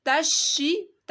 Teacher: تا کے آگے جو بڑا مادہ ہے اس کو آپ نے 5 الف کے برابر کھینچنا ہے